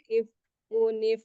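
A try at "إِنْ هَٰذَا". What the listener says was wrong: hadza jangan berat jangan h inza lebih ringan in hadza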